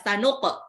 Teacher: Qafnya pantul ya, qalqalah, sanuq. Pantulnya ke qa ya.